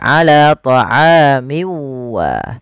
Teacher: masukkan tanwinnya ke huruf wau kemudian dirubah suaranya menjadi huruf wau awalnya ala thamin Wahid menjadi ala thamiwa kemudian disertai dengan gunah